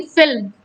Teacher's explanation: L और M के बीच में कोई भी वॉवल नहीं है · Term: कॉन्सोनेंट क्लस्टर